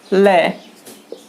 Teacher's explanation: अगर ल वर्ण का अगर हम उच्चारण करेंगे तो हवा है वो किनारों से बाहर आएगी और जीभ का आगे का भाग अधिक ऊंचाई पर चला जाएगा। आप उच्चारण करके भी देख सकते हैं, जैसे कि ल का उच्चारण करेंगे तो जीभ का आगे का भाग तो अधिक ऊंचाई पर जाएगा और हवा पार्श्व यानी बगल से बाहर आएगी। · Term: पार्श्विक व्यंजन